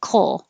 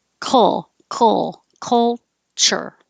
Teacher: your back of your tongue is making your K coal while the front of the tongue can make the L at the same time